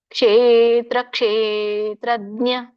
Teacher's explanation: ಇದೆ ಕ್ಷೇತ್ರ ಕ್ಷೇತ್ರಜ್ಞ ದೀರ್ಘ ಇರೋದ್ರಿಂದ ಕ್ಷೇ ಎಳಿಬೇಕು